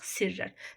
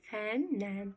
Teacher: Samitlə başlanan şəkilçidə o kökdəki qoşa samitlərdən biri düşür. Sonra fəndən, n-nın biri düşür.